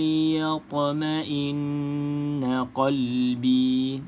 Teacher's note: ta perlu ada lantunan sebab ta ini satu daripada 5 huruf qalqalah